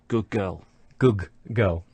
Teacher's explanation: the d sound at the end of good is becoming like the g sound at the start of girl. It doesn't actually disappear, it actually sounds like a g. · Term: assimilation